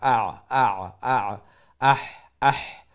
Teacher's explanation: আইন আর হা middle of the throat গলার মধ্য খান্তনে